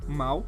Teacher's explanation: a palavra mal que tem o o W No final formando o som de u